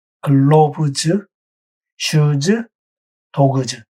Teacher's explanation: 유성음과 S가 만나면 즈로 발음을 합니다.